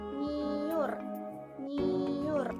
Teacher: seolah terdiri dari huruf n&y tetapi luluh menjadi satu